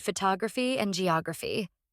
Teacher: the stress is placed on the third to last syllable